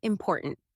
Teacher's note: take the word important we stress the second syllable poor tant because that's where the meaning lies now intonation is